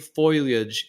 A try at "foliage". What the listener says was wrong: It's actually foliage, not foy.